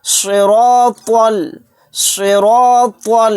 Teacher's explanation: صراط، صراط، یہاں پر دیکھیے صاد کو، را کو اور طوا کو موٹا یعنی پر پڑھنا ہے اور طوا کو لام میں ملا دینا ہے۔